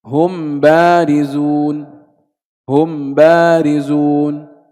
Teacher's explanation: إذن هناك قول آخر في الميم الساكنة التي وقع بعدها باء وهو الإظهار، أن نظهر الميم لا نخفيها إنما نظهرها. كيف نظهر الميم؟ قال أي من غير غنة